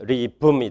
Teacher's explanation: 바이레이비얼 플러스 바이레이비얼. 이렇게 홈오르게닉시티를 가지게 됐습니다.